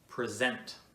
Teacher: when it's a verb the second syllable is stressed